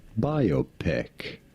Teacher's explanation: stress on the first syllable, Yeah, on the bi syllable